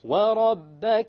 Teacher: the ra will be heavy because it has a fatha.